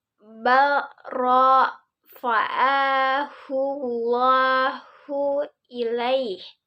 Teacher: Di sini balro tapi jadi barrofa. Jadi disambungkan ke ro selanjutnya seperti itu.